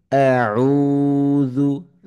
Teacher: দাল হরফটি খুবই নরম হরফ, জিহ্বার আগা উপরের দাঁতের আগাকে টাচ করে উচ্চারণ হয়।